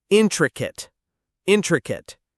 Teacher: The stress is on the first syllable.